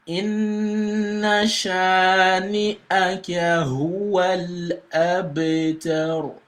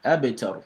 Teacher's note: the ba here is going to be pronounced with qalqala, with echo sound